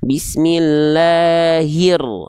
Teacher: h-nya langsung loncat ke rnya hir gitu. Konsep cara bacanya sama cuman beda tanda aja. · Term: alif lam syamsiyah